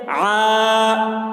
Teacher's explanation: مشق، عادن، عین الف زبر آ، الف سے پہلے زبر ہے، الف مدہ ہوا، اس لیے الف مدہ کو ایک الف کے برابر کھینچ کر پڑھیں گے